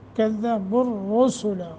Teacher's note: را کے اوپر ضمہ ہے، را موٹا کرنا ہے